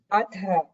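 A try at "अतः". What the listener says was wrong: The takara does not have a mahaprana, but it is followed by a visarga.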